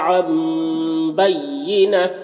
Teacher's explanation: यहाँ पर यहाँ पर भी इक़लाब हो रहा है तो नून को मीम से बदलकर गुन्ना और इख्फा के साथ में पढ़ेंगे। बय्यिना यहाँ पर वक्फ करेंगे तो ये गोलता हाय साकिना से बदल जाती है, तो इस तरह से पढ़ेंगे।